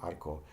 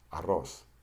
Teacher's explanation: An example of a double R is arroz, which is rice. Now, when you pronounce the single R, like this one in arco, you just flap your tongue once. When you pronounce the double R, you flap your tongue 2 to 3 times.